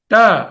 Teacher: ట అనేసరికల్లా మీద ఉన్న అంగుడు తగులుతోంది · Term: ట వర్గము